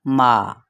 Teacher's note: ایک الف کے برابر ہی اس میم اور الف کو کھینچا جائے گا